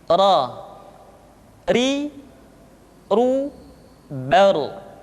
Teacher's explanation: Diucapkan dengan menyentuhkan punggung lidah dengan langit-langit. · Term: huruf ra